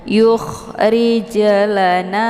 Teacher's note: jimnya dipantulkan dengan pantulan ringan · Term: qalqalah sughra